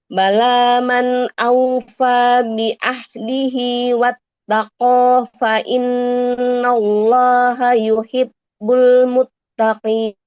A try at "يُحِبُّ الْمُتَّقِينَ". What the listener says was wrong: Jangan yuhib kan huruf ba dengan ba ya. Jadi double b. Yuhibbul. Jadi ini kan ba itu kan seperti huruf B ya. Jangan yuhib. Kalau yuhib itu awalnya kayak mukop P. Karena tasydid ini dua huruf yang sama double-nya. Ba dengan ba.